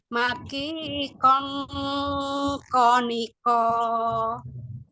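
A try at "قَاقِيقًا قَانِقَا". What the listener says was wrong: Konya jangan dimonyokkan. Dibuka lagi kon.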